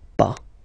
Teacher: but as usual, final S is not pronounced